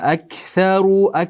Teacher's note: tilimiz bo'lsa bu oxirgi qismidan qof undan keyin kaf chiqadi bu yerdan chiqishi tilni o'rtasidan chiqishi yoki undan ko'ra sal pastroqdan chiqishi bu xato.